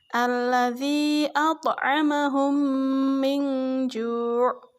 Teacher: Apabila ada mim sukun berhadapan dengan huruf mim, jadi sama-sama huruf mim ya. Cara membacanya yaitu memasukkan huruf mim ke huruf mim yang kedua. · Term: idgham misli